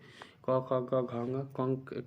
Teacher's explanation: क, ख, ग, घ, ङ, कंठ से बोले जाते हैं